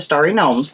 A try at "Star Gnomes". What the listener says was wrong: Star Gnomes. Not Starry.